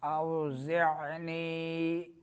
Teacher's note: عین درمیان حلق سے زا میں سیٹی نکلے گی